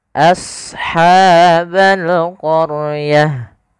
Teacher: ha ini ada sifat namanya sifat hams, mengalirnya nafas